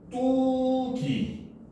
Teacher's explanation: 된소리 되기 환경이 아닌데 된소리로 나더라는 거죠